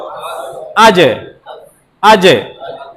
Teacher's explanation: জিমটা জিহ্বার মাঝখান থেকে উচ্চারণ হচ্ছিল, ওখান থেকেই আপনার কলকলা বা প্রতিধ্বনি সৃষ্টি করতে হবে।